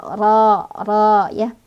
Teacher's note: Karena ro-nya berbaris fathah ya, ini fathah berdiri. Cara bacanya ro dibaca tebal, jadi seolah-olah bunyi huruf itu memenuhi rongga mulut kita. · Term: ro tafkhim